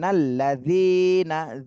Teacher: জিতে এক আলিফ টান দিতে হবে, মদের হরফ।